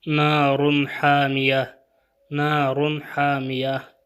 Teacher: چونکہ یہاں تنوین کے بعد ہا حروف حلقی آیا ہے اس لیے یہاں پہ بھی اظہار ہوگا